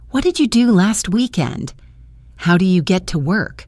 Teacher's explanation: let's practice some information questions with a falling tone at the end